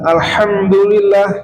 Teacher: Huruf ha itu makhrajnya itu dekat dengan huruf ain di tengah tengah tenggorokan di sini. Ain dan ha itu satu satu makhraj yang seringkiali dalam pembacaan itu adalah huruf ha itu tertarik gitu, terpengaruhi, terdistrak dengan huruf ain ya.